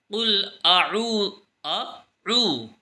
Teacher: قل اعوذ، اس میں ہم غلطی یہ کرتے ہیں کہ قل اعوذ بول دیتے ہیں، اعوذ نہیں بلکہ اعوذ، آ اور عو ان کی آواز الگ الگ آنی چاہیے۔ صحیح تلفظ اس طریقے سے ہے قل اعو، تو دونوں کی آواز الگ الگ آنی چاہیے۔